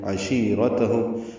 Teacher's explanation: ہم میں میم ساکن پہ اظہار شفوی ہے، او وولین ہے. عشیرتہم شی یا مدہ ہے، 2 حرکات لمبا کریں گے، را پر پڑیں گے، تا باریک.